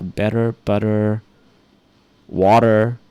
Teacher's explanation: it sounds like a D but it's not a D it's in between a tea and a D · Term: alveolar tap